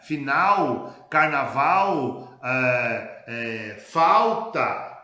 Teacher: Aliás, a vocalização do lê ocorre em todos os estados brasileiros.